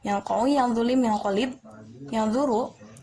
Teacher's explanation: bunyi nun terpengaruh oleh bunyi setelahnya atau huruf setelahnya, yakni huruf dhal, qaf, dan zal. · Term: alofon